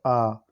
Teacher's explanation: इसमें मुख द्वार पूरा खुलता है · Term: विवृत